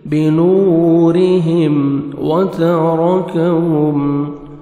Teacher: واو پہ لپس کو راؤنڈ میں لے کے جانا ہے، تا کو باریک پڑھیں گے، را کو مرزبر ہے، را کو موٹا کر کے پڑھیں گے، کاف کو باریک پڑھیں گے، میم ساکن کا اظہار ہے، جلدی پڑھیں گے۔